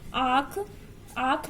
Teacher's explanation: अनुनासिक स्वरों के उच्चारण में मुंह से अधिक तथा नाक से बहुत कम सांस निकलती है।